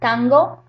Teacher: when you say that, tango, that you're pronouncing the N in the velar region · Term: velar sound